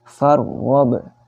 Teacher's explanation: Bukan farwab, tapi farwab. Ada ro di sana sukun, didahului oleh harokat fathah. Maka dibaca tebal.